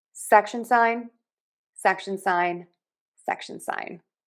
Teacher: We are stressing syllable number one. · Syllable number two has a schwah. Short quick reduced. And then we have secondary stress on sign with that long I section sign.